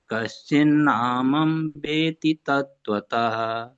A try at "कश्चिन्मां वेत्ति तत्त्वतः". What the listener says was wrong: कश्चिन नामम नहीं है, कश्चिन माम है। कश्चिन माम, माम वेत्ति तत्वतः।